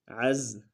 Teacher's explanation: عین کو گہرائی سے ادا کرتے ہوئے زا کے ساتھ ملائیں گے · زا سیٹی والا حرف ہے